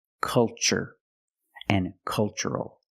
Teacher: the first syllable is a short u like cup and up uh uh make a relaxed sound